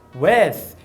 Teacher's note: eu já percebi que é a dental desvozeada, diferente do Superman, que usou a vozeada.